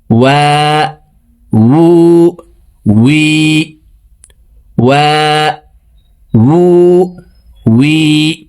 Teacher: ওয়াও আলিফ জবর ওয়া, ওয়াও হরফের উচ্চারণ দুই ঠোঁট গোল করে দুই ঠোঁটের মাঝে ফাঁকা রেখে পড়তে হবে।